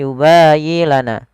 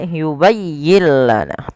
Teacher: Pada lafal yubayyi tekankan di huruf ya, bukan yubayyi lana.